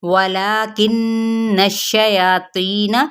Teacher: نون پہ کیا ہے غنہ کرتے ہوئے شین کے ساتھ ملائیں گے